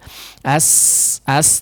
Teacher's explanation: ada suara keluar melalui apa celah di antara dua gigi seri atas dan bawah ya Sehingga jangan ditempelkan ya jangan dirapatkan antara Gigi atas dan